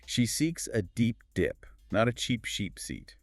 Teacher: You really have to stretch the vowel in deep and seat. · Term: long e sound